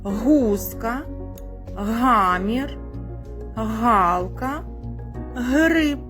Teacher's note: Звук Г, дітки, приголосний і вимовляється протяжно. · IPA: [г]